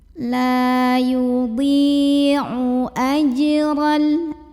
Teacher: Maka cara membunyikannya, dhad yang kasrah kita panjangkan 2 harokat saja. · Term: mad tabi'i